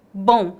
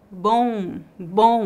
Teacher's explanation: a letra O fica nasal e temos um leve ditongo bom bom não há o som do m no final agora